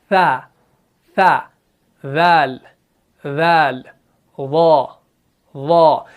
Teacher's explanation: जब आप इन तीनों हरूफ को अदा करेंगे, जुबान का जो सिर्रा होगा ये दांतों से थोड़ा सा बाहर रहेगा।